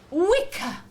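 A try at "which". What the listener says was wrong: He missed the ch on the end. you are such a hero. He forgot, my dear, that the CH says ch.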